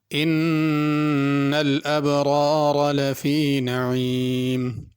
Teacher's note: نعیم میں عین ہے، اس کو نعیم حمزہ کے ساتھ نہیں پڑھنا